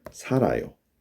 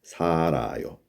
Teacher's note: 받침 always goes up when you pronounce 살아요.